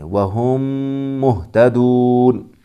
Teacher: میم ساکن کے بعد دوسرا میم آیا ہے تو یہاں پر ادغام شفوی ہوگا، اوپر ہی بتایا، تو یہاں غنہ کے ساتھ بھی پڑھیں گے۔